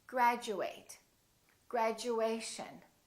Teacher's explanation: Instead of saying chew, it sounds like we're saying Jew.